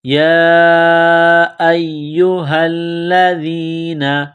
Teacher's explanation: چشمے والی گول ہا ہے، منہ سے ہوا نکالنے کی طرح اس کو پڑھیں گے، ہا کو لام کے ساتھ ملانا ہے، لام مشدد ہے تو لام میں سختی کرنی ہے، دال کو نرم کرنا ہے، دال کو یا کے ساتھ ملانا ہے۔